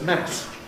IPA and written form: mæs (mass)